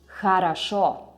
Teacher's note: Here, in this word, the stress goes on the last syllable.